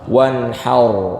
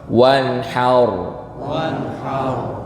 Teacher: Tebal tuh gemanya ngumpul dalam mulut, alias pangkal lidah ini naik, rahang belakang naik. Jadi suaranya seperti ini, bukan wanhar, enggak, tapi agak diatasin suaranya. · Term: rok sukun